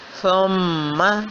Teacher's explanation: تھوڑی دیر اس کی نون کی آواز کو ناک میں جما کر روک کر رکھا گیا تو اس کو ہم کہیں گے سختی کے ساتھ غنہ کرنا۔